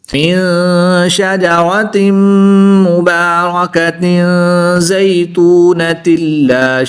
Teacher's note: दो ज़ेर की तनवीन के बाद मीम हरूफ यरमालून में से है तो यहाँ पर भी इदगाम माल गुन्ना होगा, यहाँ पर भी गुन्ना करके पढ़ेंगे